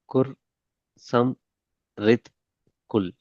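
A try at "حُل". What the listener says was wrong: குல் அல்ல, ஹுல். எப்படி? பெரிய ஹார்ட உச்சரிப்பு எடுக்கணும்.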